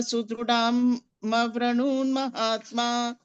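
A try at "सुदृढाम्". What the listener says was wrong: Next, not dirgha, sorry, Mahaprana. Sudrudha. Dha. Sudrudhama Vrunon Mahatma. It's not da. Sudrudhama Vrunon Mahatma.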